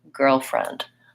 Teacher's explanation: The stress on girlfriend is on the first syllable. So I tend to say girl with some length, and friend is shorter, girlfriend.